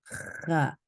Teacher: If you want to create the letter kha, kha, again, it is you gonna take your tongue back. It's going to be relaxed, going back and up and touch the upper palate.